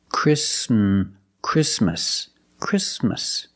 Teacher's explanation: The T is between consonants, so it is silent. Link the sound s with the m.